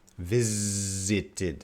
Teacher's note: The S here is pronounced as a Z.